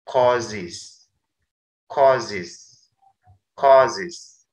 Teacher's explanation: Contoh kata cause yang berakhiran suara z, karena mendapat imbuhan akhir is, dibaca causes.